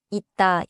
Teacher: 쌍시옷 becomes a 디귿 sound at the end.